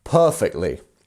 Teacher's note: So our per, that is our stress syllable, our first syllable here. Per. And then we have these two dots, which means we have a lengthened vowel.